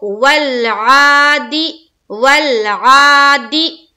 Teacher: دی کو جلد پڑھیں گے اور معروف پڑھیں گے